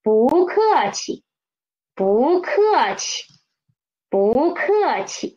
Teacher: 气, 气 is the neutral tone. 不客气, we should read them soft and quick. 不客气, read up to me please.